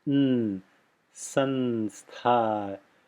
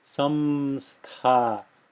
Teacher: you don't have to close the lips here just to make this nasalization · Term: dental nasal